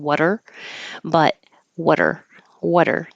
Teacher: the T changes to a d